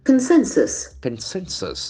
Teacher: The accent falls on the second syllable.